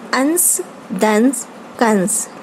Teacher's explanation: शिरोरेखा के ऊपर बिंदु वाले इस आयोगवाह का उच्चारण करते समय हवा नाक से बाहर निकलती है, जैसे अंश, दंश, कंस। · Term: अनुस्वार